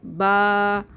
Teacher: हमारे होठों की तरी वाले हिस्से आपस में मिलेंगे